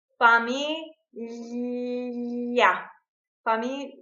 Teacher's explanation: when you say million, the tip of our tongue touches the palate and it's right behind the upper front teeth. · Yeah, we have to tip our tongue here in the back, and with this teeth, you press the tongue. The sound comes out of the sides and the G is not even pronounced.